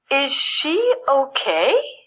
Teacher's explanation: voice goes up for example I would say is she okay my voice has to rise at the end so the listener knows that I'm asking a question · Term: your voice goes up